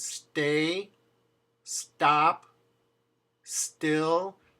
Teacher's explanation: if you put an S before the word, like the word stay, stop, still, there's no puff of air.